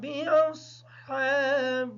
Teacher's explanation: باصحاب کی جو صاد ہے اس کو کلیئر پڑھیں گے تاکہ سین کی آواز ادا نہ ہو۔